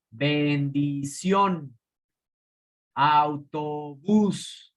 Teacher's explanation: Son agudas porque tienen su tónica en la última sílaba.